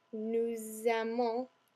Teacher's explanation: you hear the S moving into the A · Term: liaison